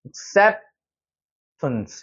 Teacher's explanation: 중간에 여기 강조가 되어 있는 부분이 많이 들리죠. 중간에 있는 것만 세게 들리고 나머지는 죽어버리는 거예요.